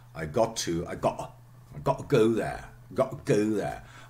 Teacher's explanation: I would say it's glottal in between two vowel sounds